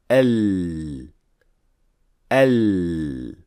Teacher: air cannot go directly to the outside of the mouth when pronouncing lam, but rather it goes around the raised tongue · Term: inhiraf